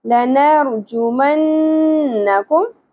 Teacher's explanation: نون مشدد ہے، غنہ کا خیال رکھنا ہے